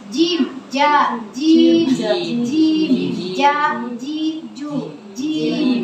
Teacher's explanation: Jim ini keluar dari lidah juga, tapi bagian tengah atau wasful lisan, bagian tengah.